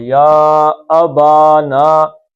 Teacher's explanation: ما زبر کے بعد الف آ گیا تو مد اصلی 2 حرکتیں